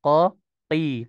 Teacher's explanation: Sedangkan 3 huruf seperti halnya huruf isti'ala yang yang infitah, contoh huruf kho, huruf qaf, huruf ghain, nah itu dia tidak merekat, ya, tetap tebal, tetap terangkat pangkal lidahnya, akan tetapi tidak merekat ke langit-langit atas.